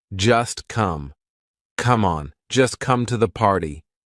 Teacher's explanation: just is followed by come. So that t is in between two consonants. It's in between the s and the c of come. So we're going to make it silent.